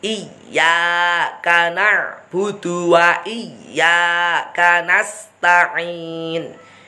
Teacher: Kalau ya tasydid tidak boleh didengungkan. Langsung ditekan dan lepas.